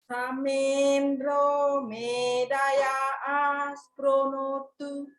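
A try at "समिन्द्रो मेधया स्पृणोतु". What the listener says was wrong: Very good. Did you feel that? Sounds coming out now.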